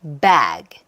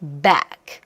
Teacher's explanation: 그런데 느낌상, 소리의 느낌상 늘어지는 느낌이 있는 거고 그 느낌이 드는 이유는 그 사운드의 유성음 소리가 묻어나와서 전체적으로 모음의 길이가 길게 느껴진다예요